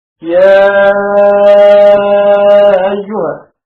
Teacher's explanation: والتسهيل مع المد والقصر، والمد أولى أخذا بالأصل